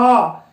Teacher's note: सामान्य ही रहती है जबकि हम आ की बात करें तो जब आ का उच्चारण करते हैं तो जीभ जो है हल्की सी पीछे की ओर खींचती हुई महसूस होती है